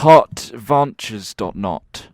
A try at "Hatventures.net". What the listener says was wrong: You're putting a weird emphasis on it.